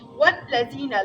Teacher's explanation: لام سخت ادا کیږي ځکه مشدد ده